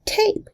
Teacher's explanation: it is aspirated, pronounced with a little extra puff of air